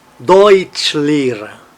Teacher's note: Deutsch, uma palavra, Lehrer, outra palavra, mas quando põe as duas juntas, a primeira fica um pouquinho mais forte.